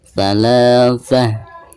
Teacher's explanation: Azwajan thalatha, bacaan la dibaca 2 harakat karena dihukumi mad tabi'i.